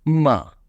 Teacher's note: And the fourth tone, we fall down